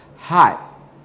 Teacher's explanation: ready to make the t sound but instead i hold off on making it